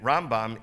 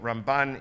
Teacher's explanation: Usually Rambam gets pronounced on the first syllable, Ramban on the last syllable. The last letter is different, whether it's a M or an N.